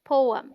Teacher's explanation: The PO sounds like po, as in go, and is this stressed syllable.